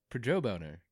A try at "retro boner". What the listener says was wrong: Retro boner. She said Pedro boner, which sounds almost like a prejudice boner. But mine's a retro boner. Retro boner.